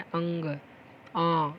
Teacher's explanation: हैं अंग अंग तो यह आते हैं अनुनासिक याणुनासिक के अंतर्गत नासिक में वाइब्रेशन होता है